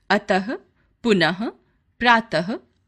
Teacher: इसका उच्चारण हल्के ह के समान अह होता है, जैसे अतः, पुनः, प्रातः आदि। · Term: विसर्ग